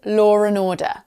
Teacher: I've inserted an R sound that isn't meant to be there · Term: intrusive R